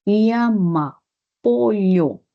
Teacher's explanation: en la sierra generalmente sí se usa la doble L, la lateral palatal